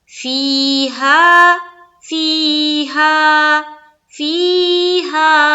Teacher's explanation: یہ دیکھیے، فیہا یعنی کہ مدہ ہو رہا ہے۔ فی میں یا مدہ اور ہا میں الف مدہ، دونوں میں بالکل برابر کھینچنا ہے